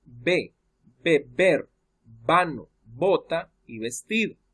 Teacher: el sonido de la B y la letra V es el mismo. Se pronuncia como B.